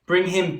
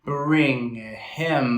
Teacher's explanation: Notice how he completely changes when he does the bring him. There's a little bit of an accent on each word.